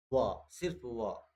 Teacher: देखो एकलौता वह है, वह आपका एक ऐसा एकलौता वह है जो आपका दंतोष्ठ होता है, जो कि दांत और ओठ से, दांत और ओठ से दोनों से बोला जाता है